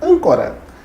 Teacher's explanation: proparoxítona, nossa antepenúltima sílaba, que ela é tônica